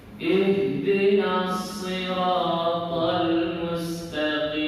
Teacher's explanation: Makhraj ha itu dari pangkal tenggorokan paling bawah.